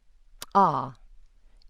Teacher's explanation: A so-called palatoalveolar click is ah. It has alveolar contact and an abrupt release.